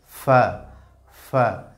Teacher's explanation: নিচের ঠোটের পেট সামনের উপরের দুই দাঁতের আগার সঙ্গে লাগিয়ে